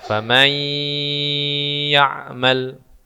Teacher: Tapi kalau kita sudah tahu hukumnya nun mati ketemu ya, maka diidghamkan, didengungkan 3 harakat. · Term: idgham bi gunnah